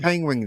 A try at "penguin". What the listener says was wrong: Yeah, you're saying penguin. You don't have a hard G. penguin.